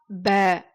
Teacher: அப்ப எதுவுமே இல்லாம இருந்துச்சுன்னா எப்படி சொல்லணும்னா ப அப்படின்னு 2 உதடுகளையும் ஒட்டி ப அப்படின்னு நம்ம சொல்லணும்